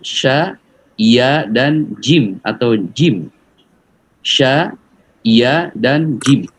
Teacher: sya itu di tengah lidah, kemudian ngangkat ke langit-langit